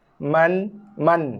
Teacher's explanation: Lidah tekan pada langit ataupun gusi atas. Sebab makhraj nun.